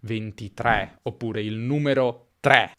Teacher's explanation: in varie parti d'Italia, come al nord, 3 si pronuncia più spesso con una E aperta